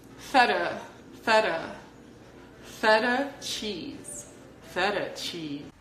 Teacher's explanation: So it's going to sound like feta, feta, not feta, but feta, feta. And the last sound in the word feta is a schwa sound